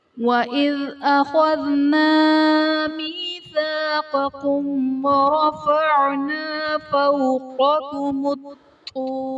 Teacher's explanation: میم ساکن کے بعد حرف با اور میم کے علاوہ حرف غا آ رہا ہے تو یہاں پر اظہار شفوی کا قاعدہ ہوگا، یعنی میم ساکن میں ہم غنہ نہیں کریں گے